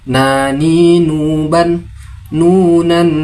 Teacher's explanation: Huruf nun tempat keluar hurufnya berada pada ujung lidah dan gusi yang sejajar dengannya disertai dengung dari rongga hidung.